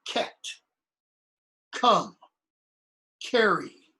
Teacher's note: what's called the velar and that's because it's made in the back of the mouth